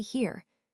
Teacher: starts with a sound similar to E and then glides into a schwa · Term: diphthong